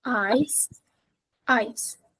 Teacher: for the second one ice the vowel needs to be compressed